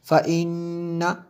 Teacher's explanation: نون مشدد ہے اس لیے یہاں پہ غنہ ہوا